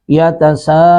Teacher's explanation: سین پر مد متصل 3 الف کھینچیں گے